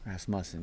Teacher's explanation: with the accent on the second syllable